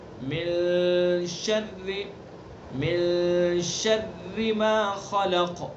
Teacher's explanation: اخفا کہتے ہیں ناک کی جو نرم ہڈی ہے، ناک کا بانسا، وہاں سے ادا کریں گے اس کو